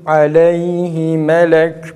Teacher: Ya'yı fazla uzatmaya gerek yok